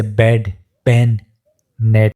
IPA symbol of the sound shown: e